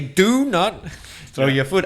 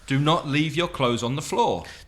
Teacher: So they're stressing the not.